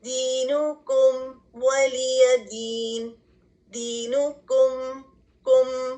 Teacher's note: اس میں میم کی آواز کو ظاہر کریں گے, اظہار کریں گے. اور بہت سمپل سا رول ہے, اس میں سمپلی آپ نے میم کی آواز کو ظاہر کرنا ہے.